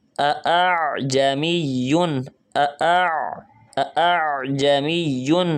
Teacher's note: گلا وائبریٹ کر رہا ہے عین کی ادائیگی میں